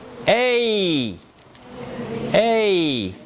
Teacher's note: It's tense, as if you were making the sound A. But as you say A, you move your tongue up and forward, as if you were going to do E. · This vowel is created by taking the tongue forward, neither raising nor lowering it, leaving the lips unrounded. It's tense, as if you were making the sound A. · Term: diphthong